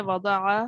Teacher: اور وضع میں ضاد ہے، اس کو پر یا موٹا پڑھتے ہیں، عین حلق سے نکالیں وضع، اور را جو ہے یہ را ساکن، اس کو پر پڑھیں گے۔